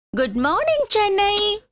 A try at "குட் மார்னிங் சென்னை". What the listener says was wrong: வாயில இருந்து நெஞ்சு வரைக்கும் வந்துருச்சு, இப்ப வயித்து வரைக்கும் வரணும். இது மேல் வயித்துல இருந்து வருது, கொஞ்சம் அடி வயித்துல இருந்து வரணும்.